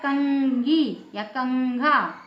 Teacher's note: क वर्ग का पांचवा वर्ण अंगा है ना अंगा का उच्चार निकल रहा है